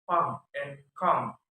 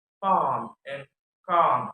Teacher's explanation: This vowel is a short vowel in American English, but a long vowel in British English. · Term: Low back unrounded